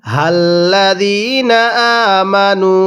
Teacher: ইয়া আইয়ু, এরপরে হাল্লাযীনা আমানু, এই যে জালিয়াজের জি, 1 আলিফ টান দিব। জেরের পরে ইয়া সাকিন, এটা যেখানেই দেখব আমরা সেখানেই 1 আলিফ টেনে পড়ব।